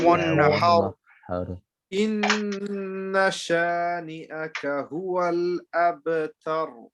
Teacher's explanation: all the last ras in this surah is full mouth, yeah? Because they have, when you make it into a sakin, they have a fatha before it.